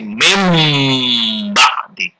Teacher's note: Tidak ada n, tapi diganti ditukar dengan m, jadi mim ba'di.